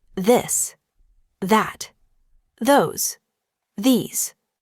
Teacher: practice the softer version of the th, where you let your tongue touch your teeth lightly, but use your voice.